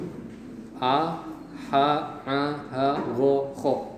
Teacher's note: huruf-huruf yang keluar melalui tenggorokan, ya, dari pangkal tenggorokan, tengah tenggorokan, dan ujung tenggorokan. Karena keluarnya dari tenggorokan maka disebut halqi. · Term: izhar halqi